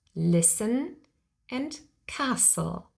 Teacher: but we never pronounce the T and that is the case no matter the person accent or dialect the T sound is always left out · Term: silent T